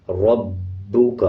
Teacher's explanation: اب جیسے یہ با کے اوپر شد ہے تو با کو را کے ساتھ ملا کے پڑھیں گے اور با کو مضبوطی کے ساتھ ادا کریں گے